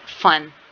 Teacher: फन जो है ये भी वॉइसलेस साउंड है, इसमें भी जो वाइब्रेशन है वो प्रोड्यूस नहीं हो रही। ये है लेबियोडेंटल।